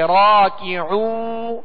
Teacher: عین کو وسط حلق سے درمیانے حلق سے ادا کرنا ہے